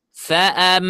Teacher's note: Nah, di sana ditahan dan di sana hukumnya adalah ghunna musyaddadah karena mimnya bertasydid.